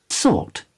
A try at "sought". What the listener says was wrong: Não, parece que tem um som de R ali, não? Eu ainda prefiro a versão britânica, então. Sought. Sought. Sought.